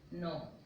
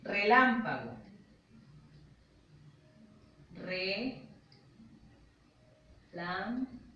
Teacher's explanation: Tenemos las palabras esdrújulas. Estas palabras, a diferencia de las agudas y de las graves, siempre van tildadas y llevan el acento en donde, en la antepenúltima sílaba.